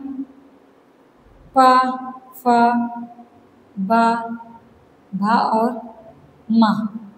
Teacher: दोनों ओठों के स्पर्श से उत्पन्न होती है। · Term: ओष्ठ